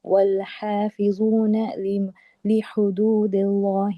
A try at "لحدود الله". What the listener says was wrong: माशाअल्लाह, खाली एक ही चीज के लफ्ज अल्लाह से पहले अगर जेर है तो बारीक पढ़ देना, ली हुदूदिल्लाह।